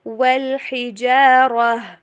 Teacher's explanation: وا کو انگلش کی وی والی ساؤنڈ پہ نہیں بلکہ ڈبلیو والی ساؤنڈ پہ پڑھیے